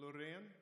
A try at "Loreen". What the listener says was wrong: Lorraine. He even said R. But that's just the Swedish pronunciation, but it's Lorraine. But it's Lorraine. So it's A. It's not Loreen, it's Lorraine. You see the difference?